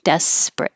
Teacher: it does look like it should be three syllables desperate but the middle one is not stressed and we drop it